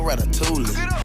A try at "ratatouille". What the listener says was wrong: Did he just pronounce the L in ratatouille like some kind of plebeian?